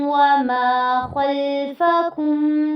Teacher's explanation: خوا کو پر کرنا ہے، لام پہ جھٹکا نہیں کرنا ہے، اس کو درمیانے ٹائم کے ساتھ آپ نے اس کو ادا کرنا ہے